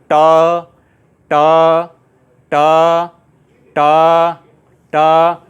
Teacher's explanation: टा बोलते समय जीभ ऊपर की तरफ लग रही है, जो ऊपर है, ऊपर का जो भाग है उस पर जीभ स्पर्श कर रही है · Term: मूर्धा